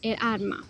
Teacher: In some rural areas of Granada, L and R can switch places in the final position. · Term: rotacism